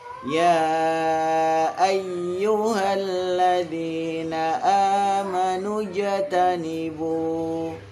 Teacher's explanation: Ya, jimnya qalqalah. Jangan lupa dipantulkan jimnya.